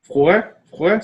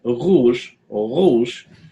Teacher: Americans tend to think this of Arabic too, and really it's just because that sound, r, is back in the throat, is further back in the mouth, and r, it's putting the back of your tongue against the back of your mouth